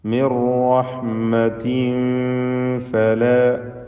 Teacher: മിൻ എന്നതിലെ സാക്കിന നൂൻ പൂർണ്ണമായും റായിൽ ലയിപ്പിച്ച് മണിക്കാതെ ഉച്ചരിക്കുക. ഇദ്ഗാം ബിഗൈരി ഗുന്ന അല്ലെങ്കിൽ ഇദ്ഗാം ബിലാ ഗുന്ന.